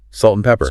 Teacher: The and often sounds like N.